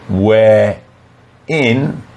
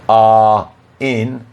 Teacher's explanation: the final R is pronounced so we can link it to the next word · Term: linking